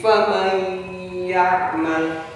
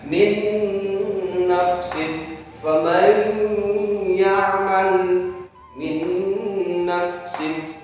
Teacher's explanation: Faman ya'mal, faman apabila nun mati atau nun mati bertemu dengan huruf ya. Idgham bi gunnah. Ini rumusnya, rumus idgham bi gunnah. Maka dibaca dengung.